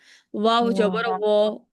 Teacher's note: নিচের ঠোঁটটা উপরের দাঁতের সাথে, উপরের দাঁতের উপরে 2 দাঁতের সাথে লাগিয়ে তারপরে উচ্চারণ করবেন।